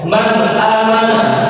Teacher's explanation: nun sukunnya dibaca secara izhar atau jelas. Dan tidak juga didubur sempurna atau tidak juga didubur.